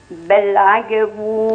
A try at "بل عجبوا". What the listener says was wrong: لا عجي مش عجا. عجي. عجي. عجي.